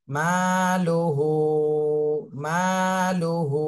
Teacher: এক জবর এক জের এক পেশকে হরকত বলে, হরকতের উচ্চারণ তাড়াতাড়ি পড়তে হয়, এখানে আমরা তাড়াতাড়ি পড়বো। মা লুহু, হু এখানে মদের হরকত, 1 আলিফ টেনে পড়তে হবে।